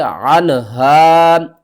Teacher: نون ساکن کے بعد اگلا حرف دیکھیں، حروف حلقی میں سے ہا آ رہا ہے، تو یہاں پر آپ نے اظہار کرنا ہے، نہ کہ غنہ۔